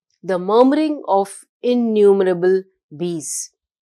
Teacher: the soft murr sound creates a buzzing, continuous murmur that imitates bees